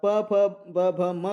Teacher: प फ ब भ म कह रहे हो तब दो भी ओष्ठ जो है मिल रहे हैं एक दूसरे को चिपक जा रहे हैं